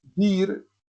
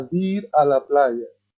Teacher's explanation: la prótesis, que es una adición fonética al principio de la palabra, es muy común escuchar dir para expresar ir, voy a dir a la playa.